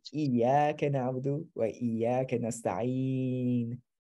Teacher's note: If you stop the sentence, you wouldn't say the u.